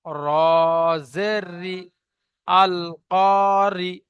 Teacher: রয়ের নিচে জের, জেরকে বারিক করে পড়তে হবে